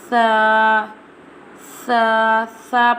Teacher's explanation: Tha pronounced from the tip of the tongue touching the inner edge of the top two front teeth.